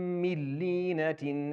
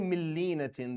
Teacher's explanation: the noon for the word min is not pronounced at all. Like it doesn't exist at all.